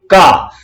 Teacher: जीभ को देखिए कहां से, बैक साइड से शुरू किया गया, का, जहां जीभ के अगले हिस्से का प्रयोग ही नहीं किया गया था। पिछली जो जीभ का पिछला हिस्सा उसको उठा करके और कंठ से जोड़ा गया था तो निकला था का।